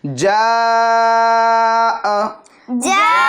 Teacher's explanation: सिर्फ और सिर्फ हम एक अलिफ की मिक दार खींच के पढ़ेंगे